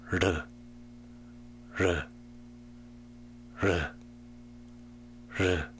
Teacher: The tongue almost touched the roof of the mouth before falling away. It is similar to the flapping sound of the T when pronouncing butter in American English.